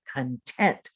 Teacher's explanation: you're going to put the accent on the second syllable so your mouth opens wider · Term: accent pattern